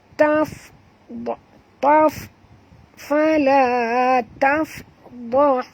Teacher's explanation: Taf bunyikan hamas pada fa, taf keluar angin ya